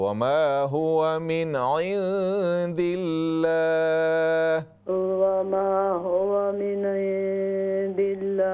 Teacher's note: ये लाम बारीक होगा, छोटा होगा।